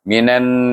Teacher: ini diidgamkan nun dengan nun, iaitu idgham syamsi. Iaitu dia idgham syamsi, kerana huruf ini adalah alif lam ini adalah alif lam syamsiah.